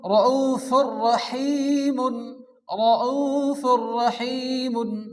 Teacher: এখানে কিন্তু ফুর বলে কোনো টান হবে না, তাড়াতাড়ি বলতে হবে। ফা র 2 পেশ, ফুর, র জবর র, হা ইয়াজের হি, মিম 2 পেশ, মুন।